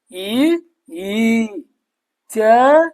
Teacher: ತಾಲುವಿನ ಸಹಾಯದಿಂದ ಹುಟ್ಟುವುದರಿಂದ ಇವುಗಳಿಗೆ ತಾಲವ್ಯ ಅಕ್ಷರಗಳು ಅಂತ ಕರೀತಾರೆ